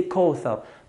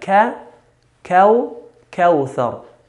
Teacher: Whenever we have a letter with a فتحة, and after that is واو سكون, we have to be careful in not pronouncing the letter closer to an O, the English O.